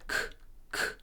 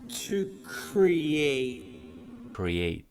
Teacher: First letter is K and it's an aspirated sound. So you need to breathe out a little bit of air when you're saying it